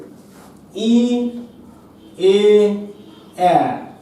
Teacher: ই এ এ এই 3টি স্বরধ্বনি উচ্চারণের সময় জিহ্বা মুখবিবরের সামনের দিকে এগিয়ে আসে, ই এ এ এই 3টাকে তাই আমরা বলছি সম্মুখ স্বর।